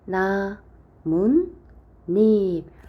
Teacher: 줍니다 세 번째 니은 니은이 덧난다 나무와 잎이 만납니다 자 이때에 나문 닙 하고 발음 되니까 니은 니은이 덧나서